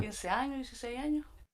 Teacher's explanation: And then at the end, I kind of hear a little puff of air, so that's like an H.